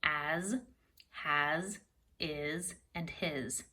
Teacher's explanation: those words that's right they all end in an S but that s is a voiced S is making that Z sound · They all end in an S, but that S is a voiced S. It is making that Z sound. So I actually went ahead and put a Z line through them to show that they are voiced S's.